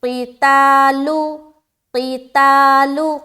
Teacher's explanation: قاف موٹا ہے لیکن تا میں آواز فوراً باریک ہو جانی چاہیے